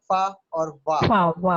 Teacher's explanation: फा जब बोलेंगे तो नीचे वाला होंठ दांतों से टकराएगा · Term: लिबियोडेंटल